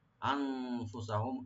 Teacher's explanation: আন এখানে নুন সাকিন এখানে ইখফা করবেন।